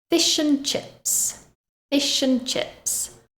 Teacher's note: I join the sh from fish together with the a from and they combine together to make one word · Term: linking